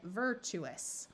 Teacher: here's another example where the T winds up sounding more like CH just because it's hard to say